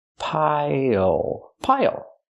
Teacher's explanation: Use the dark L at the end. It changes the vowel.